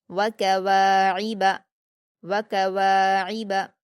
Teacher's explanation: वाव पर अलिफ मद्दा है, 2 हरकत खींच कर पढ़ेंगे, आइन पर हरकत जल्दी पढ़ेंगे और हलक से अदा करेंगे, बा पर हरकत जल्दी पढ़ेंगे।